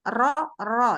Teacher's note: Jadi turun punggung lidah dan bergetar.